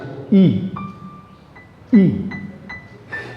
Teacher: বন্ধু, আমরা আ বলার সময় ঠোঁটটাকে একটু হাঁ করে ছড়িয়ে দিই। ই বলার সময় আমরা ঠোঁটটাকে অনেকটা বেশি ছড়িয়ে দিই, আর ঠোঁটটা আগের মতো অতটা হাঁ থাকে না, হাঁটা কমে যায়, হালকা দাঁতটা একটু ফাঁকা করে জিভের ওপর দিয়ে হাওয়া বেরিয়ে আসে।